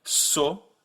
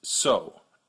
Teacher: the French version stays put there's no U at the end